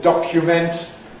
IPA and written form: ˈdɒkjument (document)